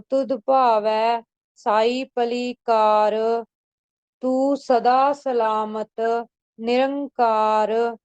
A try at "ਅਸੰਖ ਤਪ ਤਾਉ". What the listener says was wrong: ਸਿਰਫ ਇੱਕ ਅੱਖਰ ਤੁਹਾਡਾ ਨਾ ਭਾਰਾ ਹੋ ਗਿਆ ਤਾਂ ਆਪਾਂ ਤਾਉ ਬੋਲ ਹੋ ਗਿਆ ਤਾ ਉਹ ਪੋਲਾ ਹੀ ਬੋਲਣਾ